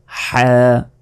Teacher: গলার মাঝখান থেকে এটা উচ্চারণ হবে। হলকের মধ্যভাগতে হা অক্ষরটি উচ্চারিত হয়।